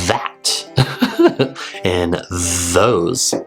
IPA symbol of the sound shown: ð